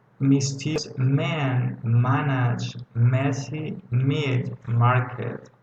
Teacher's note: And the last one sound was M. The place of articulation is bilabial because, like the first one, we are using our lips.